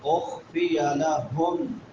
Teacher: میم ساکن ہے بعد میں حروف یرملون میں سے میم آ گئی ہے تو ادغام مع الغنہ ہوگا